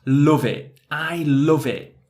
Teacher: there's no T sound. It's that glottal T and mixing those two words together.